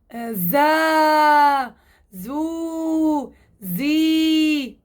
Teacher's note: مسار حرف الزاي بده يكون للأسفل لأنه الحرف مستفل بده يكون للأسفل.